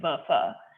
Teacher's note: with an American English VF, you're pronouncing it between your teeth and your bottom lips